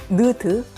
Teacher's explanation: 혀 끝을 윗 잇몸에 대면서 발음하는